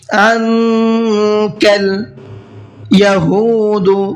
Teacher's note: ہا کو کھینچ کر کے پڑھنا ہے، اس لیے کہ یہاں پر واو مدہ ہے